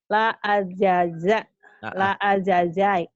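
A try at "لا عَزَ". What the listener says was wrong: Jangan dijaikan. Zai itu kalau belum berbaris. Pokoknya dirasa-rasa kalau Z itu kayak ngomong gimana sih? Za.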